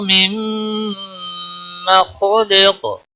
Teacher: نون ساکن کے بعد میم مشدد آیا ہے، ادغام با گنہ ہوگا